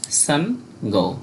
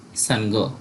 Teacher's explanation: উ এর জন্য অর্ধেক ন আর পরে গ আর এই গ ওকার নিয়েছে